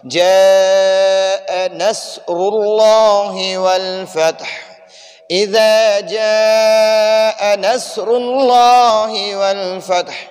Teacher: اذا جا کے اوپر یہ بڑا مد ہے، تو اس میں ہم تھوڑا سا اس جا کو لمبا پڑھیں گے